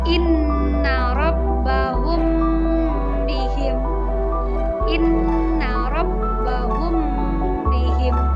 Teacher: Ikhfa syafawi adalah ketika huruf mim mati bertemu dengan huruf ba, maka cara membacanya adalah samar-samar.